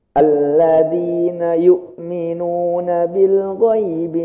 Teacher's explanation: hamzah di sini bukan di hidung. Jadi kalau baca yu'minun, hidungnya ditekan, suaranya berubah, salah.